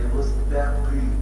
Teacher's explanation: تظل قاف مفخمة ولكن اقل درجات التفخيم لانها مكسورة ولكن تظل مفخمة